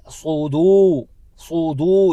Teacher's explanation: سین باریکی کے ساتھ ادا کیا جاتا ہے اور صاد پر طریقے سے ادا کیا جاتا ہے۔ تو ہم پڑھیں گے صودو صودو، دال کو کھینچنا ہے کیونکہ دال کے بعد واو ساکنہ حرف مدہ میں سے ہے، تو دو حرکت کی مقدار اس کو کھینچیں گے۔